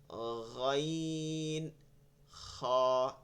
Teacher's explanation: সাথে তালুটা সংযুক্ত আপনি তালুকে এড়াইয়া করতে পারবেন না এই কারণে হলক থেকে উচ্চারণ শুরু হবে তালুতে হালকা একটু ঘষবে ঘষে এখান থেকে বের হয়ে যাবে মুখ থেকে এর জন্য এই দুইটা নরম হয় হালকা একটু নরম হয়ে যায়